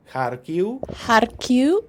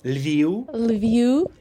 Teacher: the final v becomes a bit short, non-syllable forming u